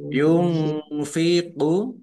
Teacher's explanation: nun sukun bertemu dengan huruf fa bacaan ifa dibaca samar-samar